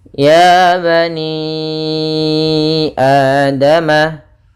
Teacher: Panjangnya untuk mad jaiz yaitu 4 harokat. Adapun juga mencapai 5 harokat, tapi yang sering kita ambil dan masyhurnya adalah 4 harokat. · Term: mad jaiz munfasil